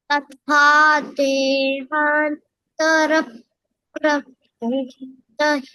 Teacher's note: तथा तथा थ महाप्राणा has to come, darling.